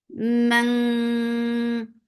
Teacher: this is ikhfa. So keep the sound in your nose for a longer time.